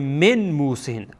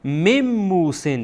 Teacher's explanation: اگر من موسین بخوانین اشتباهه، بلکه باید بخوانین میم موسین، یعنی میم با میم دیگه وصل میشه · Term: ادغام